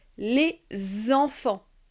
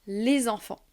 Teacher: Je vais lier la dernière lettre, le S de les, au E d'enfant. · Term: liaison